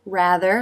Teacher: Mouth takes the R consonant shape and the tongue tip comes through for the th rather.